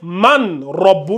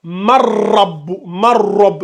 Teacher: C'est-à-dire, c'est comme si on a ma, et c'est comme si le ra est venu fusionner avec le noun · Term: la fusion